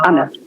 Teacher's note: It's with a schwa in the end, Anna. Yeah.